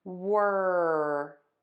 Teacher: you're going to pull your lips back into a square tense shape for that ER